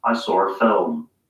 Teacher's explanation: people sometimes add an R sound to a word that doesn't actually have one if it's followed by a vowel in the next word. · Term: intrusive R